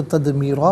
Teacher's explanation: دال ساکن ہے لیکن یہ بھی حرف قلقلہ ہے تو آواز لوٹتی بھی محسوس ہوگی